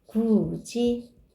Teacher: 이 모음 앞에서 디귿이 지읒으로 바뀌었죠? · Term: 구개음화